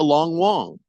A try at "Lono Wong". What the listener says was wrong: His name is Blazin Lono Wong. There is nobody named Long Wong. it's a hyphenated last name, so it's not just Blazin Long. It's Lono Wong.